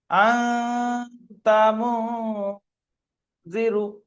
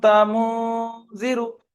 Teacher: তাহলে এখানে দু জায়গায় ইকফা হবে এবং আওয়াজটা নাকের ভাষায় উঠছে। নাকে হাত দিয়ে দেখবেন নাকটা কাঁপছে। আ, আপনার নাকে হাত দিলে দেখবেন নাকটা ঝিঝির মতো কাঁপছে।